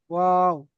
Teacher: দুই ঠোট না মিলিয়ে মাঝখান থেকে উচ্চারিত হয় ওয়াও।